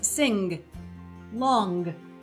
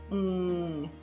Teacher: the tip of my tongue is not needed at all to create the ng sound. In fact, I can have it tucked behind my lower teeth to create that sound.